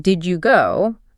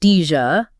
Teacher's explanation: So instead of carefully saying did you go with separate sounds, the D and the Y merge together to make a J sound like the J in judge. So it becomes Dja. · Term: assimilation